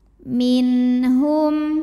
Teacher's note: nun sukun yang menghadapi huruf halqi atau huruf tenggorong yaitu ha maka Nun ini kita bunyikan dengan jelas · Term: izhar halqi